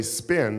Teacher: Put your hand there and say spin, and there's no explosion of air. The P's are different.